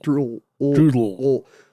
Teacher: it's a dark L in that you say it with the tip of your tongue